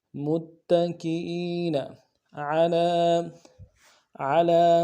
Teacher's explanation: عین کو موٹا کریں گے، لام کے اوپر کھڑا زبر ہے، ایک الف دال میں کھینچیں گے